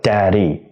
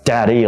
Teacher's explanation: So just flapping the tip of your tongue against your gum region, that's more than enough. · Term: flap D